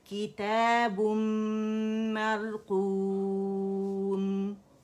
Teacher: میم مشدد ہو گیا۔ اب یہاں پہ جو غنہ ہے وہ غنہ اکمل ما تکون، یعنی فرسٹ گریڈ کا دی موسٹ کمپلیٹ لانگسٹ غنہ بنے گا